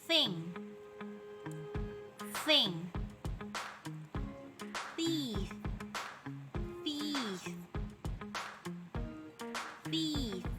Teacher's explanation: Voiceless fricative by putting your tongue between your teeth.